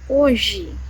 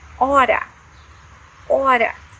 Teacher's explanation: Letter H in Portuguese at the beginning of the words has no sound. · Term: mute